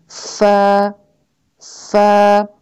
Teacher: فا جو ہے اس کے لیے آپ کے اوپر کے 2 دانت جو ہیں وہ نیچے والے ہونٹ پہ ٹچ کرتے ہیں اور پھر نکلتا ہے فا. پہلے ایک سانس کی آواز آتی ہے یہ والی، پھر آگے اس کے ساتھ الف ایڈ ہوتا ہے